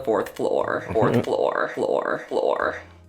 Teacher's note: you'll get the r whereas in other places you might get flow